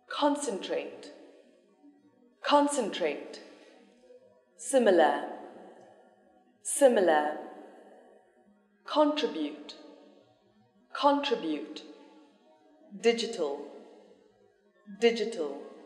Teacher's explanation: learn to pronounce strengths in three syllable adjectives and verbs this stress is on the first syllable